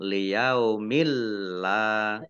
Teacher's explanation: Idgham bila gunnah masuk dengan tidak mendengung. Ya. Langsung masuk ke huruf lam, ya ditandai lamnya ada tasdidnya, tidak mendengung.